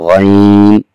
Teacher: گلے کے شروع سے جہاں سے خا ادا ہوا تھا وہیں سے غین بھی ادا ہو رہا ہے، اور اس حرف کو بھی موٹا ادا کیا جا رہا ہے۔